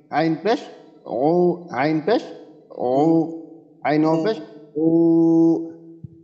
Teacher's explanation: আইনের ক্ষেত্রে আমরা একটু গলায় বাঁধিয়ে দেবো, তাহলেই হয়ে যাবে। আইন পেশ ও, গলার ভিতরে একটু চাপ দেব, হবে ইনশাল্লাহ।